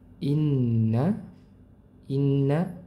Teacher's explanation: Qolu inna inna ya nun bertasydid itu didengungkan ya ditahan didengungkan. Jadi adanya udara yang keluar dari pangkal rongga hidung tahan dua harakat.